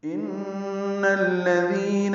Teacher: ان میں نون مشدد پہ غنہ ہے، نون کو الذین کے لام سے ملانا ہے، تو ان الذین ہوگا، دال کو نرمی سے پڑھیں گے اور 2 حرکات لمبا کریں گے، مد اصلی ہے یا مد۔